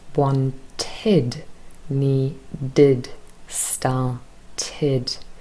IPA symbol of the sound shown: ɪd